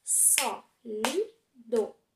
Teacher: A sílaba forte é o só. Sólido tem 3 sílabas, sendo o do a última, o li a penúltima e o só a antepenúltima. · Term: proparoxítona